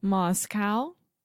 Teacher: the first sound is ma with a very open ah